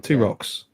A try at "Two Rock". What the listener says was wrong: No, it's a Two Rock. Yeah, it's not. Yeah, there's no S on the end.